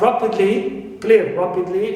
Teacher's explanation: Li, ly, the adverbs usually, clear, at the end of of the word, like rapidly, clear, rapidly. So here, ra is stressed, but not li. Li is neutral.